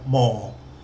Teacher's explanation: But this one's got a falling tone. More, with the sort of falling tone, you need to try to put more energy into the first part of the word, then let it drop off